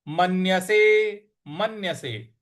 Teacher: म के बाद जो आधा न है उस पर हमको आघात देना है